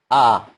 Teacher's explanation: Fathah itu saya katakan dia terbuka tetapi tidak terlalu lebar, tidak juga tertutup. Tidak a, tidak juga o, tetapi dia pertengahan a.